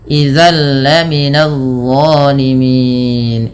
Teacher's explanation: Idalla minadzolimin idzalla ada bacaan idgham bila ghunah yang di mana bunyi tanwinnya dimasukkan langsung ke huruf lam. Nah, idgam bilaguna juga dikenal dengan idgham kamil, idgham yang sempurna sehingga masuk secara utuh dan tidak meninggalkan bunyi tanwin atau suara nunnya.